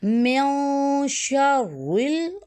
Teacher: را تشدید ہے اور را تشدید کو ہم جو ہے وہاں یہاں را کو ہم موٹا پڑھیں گے